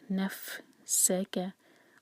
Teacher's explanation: س whistling sound سیٹی جیسی آواز سین کی ہمیشہ آنی چاہیے